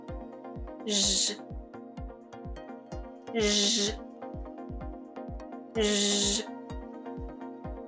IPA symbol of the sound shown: ʒ